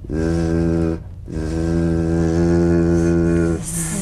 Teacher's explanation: The Z vibrates in that very small open space between the tongue and the upper teeth. Right in here.